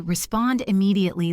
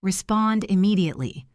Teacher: If you say respond immediately with a pause in the middle, it takes time and effort. But if you say respond immediately, linking the D to the I, it flows much faster